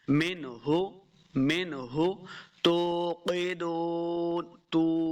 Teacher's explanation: واو آئی تو ہم نے اپنے ہونٹ گول کیے تو واو کا مخرج صحیح ادا ہوا